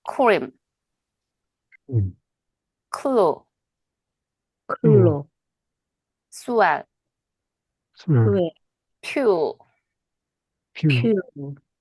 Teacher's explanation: 유성음으로 발음하려고 노력하실 거예요. 근데 그게 아니라, 무성음 뒤에 있는 활음과 유음은 어떻게 된다? 무성음화된다. 디보이싱 된다는 뜻입니다.